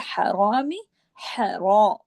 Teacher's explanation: रा को मोटा जबर की वजह से, जब भी रा पे जबर या पेश हो रा को मोटा पढ़ा जाता है, ये रा की कंडीशन है।